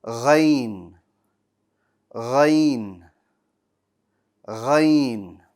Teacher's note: Ghain is another bold letter. Strong. The back of your tongue is going to rise. And it has no air. No air to your ghain.